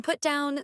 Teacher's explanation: for phrasal verbs, the stress is placed on the particle. For example, in put down, the emphasis is on down.